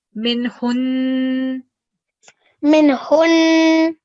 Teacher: See, if we were not stopping, we made the min hunna, the na sound at the end, if we were not stopping. But because we're stopping, we're not going to make the na sound because we're changing this fatha to a sukoon.